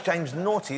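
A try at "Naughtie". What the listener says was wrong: It's pronounced Nockety, but it's spelt naughty.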